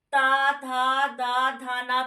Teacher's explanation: तो दांत से उच्चारण हो रहा है